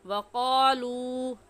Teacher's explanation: ایک الف کے برابر کھینچے کیونکہ یہ واو مدہ ہے